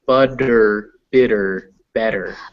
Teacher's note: And the one thing I want you to try when you're saying this is remember that those T's, it's okay to say it butter, bitter, better, but in more fluid English, it's butter, bitter, better. It's a D sound.